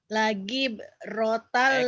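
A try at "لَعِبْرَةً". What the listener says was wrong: Kok jadi lagi? La'i, ain. Kalau ada titiknya betul. Ini ain, ayo. La'i. La ibratan limayyakh.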